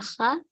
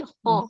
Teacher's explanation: Kho-nya tebal nih, enggak kha, tapi kho.